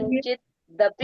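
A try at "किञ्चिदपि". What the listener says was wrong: हाँ, दीदी कंचित नहीं है, किंचित है। किंचित अपी।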